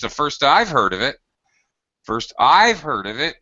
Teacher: stress on the I've heard about it because other people have heard about it before